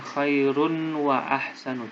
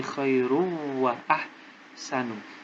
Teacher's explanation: Jadi tanwinnya dimasukkan dalam huruf waw. Khairu. Bukan khairun wa ahsanu, tapi khairu wa ahsanu. Bila guna tidak mendengung. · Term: idgham bila hunna